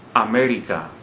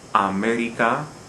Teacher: at this example america the word ends in a vowel america we don't stress the second the last syllable as the rule would require we stress the third the last so we have to indicate that with a written accent another